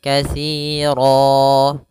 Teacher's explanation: Nah, di sini katsiro termasuk kata isim yaitu katsiro kita wakaf maka dia fathatain bertemu dengan alif maka itu dirubah ketika kita wakaf maka dia menjadi panjang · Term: Mad iwad